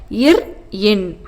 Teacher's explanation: மேல்வாயை நாக்கின் நுனி மிகவும் பொருந்துவதால் பிறக்கும் மெய் எழுத்துக்கள்